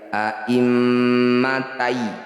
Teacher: bunyi fathah tanwin langsung masukkan pada ya. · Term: idgham bi gunnah